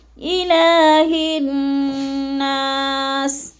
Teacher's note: حلق کے آخری حصے سے نکالنا ہے، جیسے الہ الناس، اور ہا کو نون مشدد کے ساتھ پھر ملانا ہے، الف اور لام نہیں پڑھے جائیں گے